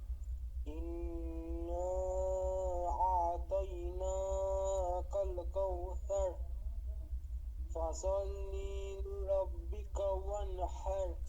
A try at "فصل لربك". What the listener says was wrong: ফসল্লি লিরব্বিকা, লিতে টান দেওয়া যাবে না। ফসল্লি লিরব্বিকা।